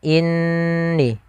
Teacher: kita menahan suara ghunahnya sepanjang dua harakat · Inni sama ada nun bertasydid. Nun bertasydid sama kita hukumi dengan ketika adanya mim bertasydid, yaitu hukumnya sama, yaitu kita menahan suara gunnahnya sepanjang 2 harakat. Maka inni, jangan langsung inni.